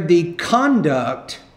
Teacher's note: So on that, on the noun there, the conduct of the conductor was inappropriate. You want to put stress in the first syllable there.